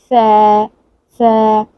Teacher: ठीक है, जामे कौसर की बात हो रही है तो इसको गलती से भी इसको सीन और स्वाद नहीं लगाएंगे बल्कि फ़ा लगाएंगे। और फ़ा कैसे अदा करते हैं कि आपके जो दांत हैं उनको आपकी ज़बान टच करती है